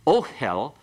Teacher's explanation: notice the accent has to be on the O part